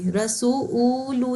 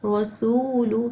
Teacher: ہم نے واؤ کو لمبا کیا ہے لیکن او کی آواز نہیں نکالی، رسولو نہیں پڑھا، رسول، سین کو ہی ہم نے 2 کاؤنٹس دیے ہیں۔